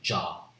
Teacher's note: this one voiced postalveolar affricate sound